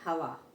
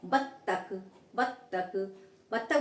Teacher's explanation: बत्तख बोलेंगे तो क्या होगा, हमारे दोनों होठ मिल रहे हैं